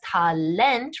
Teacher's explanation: With that emphasis on the final syllable